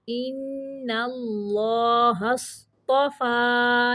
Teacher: صاد کو موٹا پڑھنا ہے، تو فا کو باریک پڑھنا ہے